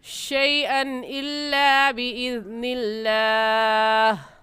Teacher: اور قاعدہ یہ ہے کہ حروف مدہ کے بعد تشدید آ جائے تو وہاں پر بھی مد ہوگی اور اس مد کا نام ہوگا مد لازم، اور اس کو 5 الف کے برابر کھینچیں گے اور ایسے پڑھیں گے وَلَيْسَ بِضَارِّهِمْ شَيْئًا إِلَّا بِإِذْنِ اللَّهِ. شیئن کی تنوین پر غنہ نہیں کریں گے کیونکہ تنوین کے بعد حروف حلقی میں سے حمزہ آ گیا ہے. تو جلدی سے پڑھ جائیں گے شیئن الا باذن اللہ.